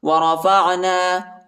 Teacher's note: عین کو وسع حلق میں یعنی گلے کی درمیانی حصے میں پڑھنا ہے۔ · یہ پہلے والا قاف جو ہے اس کو موٹا پڑھیں گے